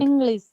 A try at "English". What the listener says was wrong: that sound, S sound, yeah, it is SH rather than S.